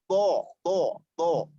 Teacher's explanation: Ya, dia berasal dari pangkal lidah. Tempatnya atau makhrajnya di pangkal lidah. Karena terangkatnya pangkal lidah.